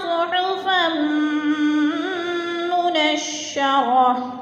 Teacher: فا کو میم مشدد کے ساتھ ملا کر ادغام کریں گے